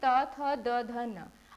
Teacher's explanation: आपकी जीभ कौन से हिस्से को आपके मुंह के टच कर रही है? तो वो है आपके दांत। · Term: दंत्य